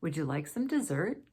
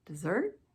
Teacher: This is a yes or no, closed question, rising intonation.